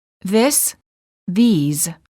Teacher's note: is pronounced with a long vowel e and a z sound